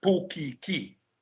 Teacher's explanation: Portuguese in Hawaii is pukiki because there is no t and there is no g. So it becomes k.